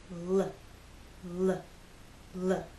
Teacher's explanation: we use our voice you will feel vibration here when you make the L Sound